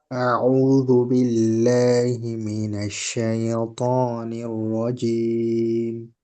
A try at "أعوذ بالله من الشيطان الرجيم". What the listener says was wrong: আচ্ছা, যেগুলো আপনার বলে আরেকদিন বলছিলাম যে এই ইয়ার যে উচ্চারণ না, এটাকে আরেকটু হালকা ভাবে আওয়াজটাকে সোজা রেখে, অর্থাৎ সেই তো, সেই তো, এখানে যেন সেই, সেই এইভাবে আওয়াজটা না হয়। সেই তো নি, সেই তো নি, এরকম হবে।